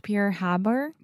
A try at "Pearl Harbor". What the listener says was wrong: sounded like you're trying to say Pure Bar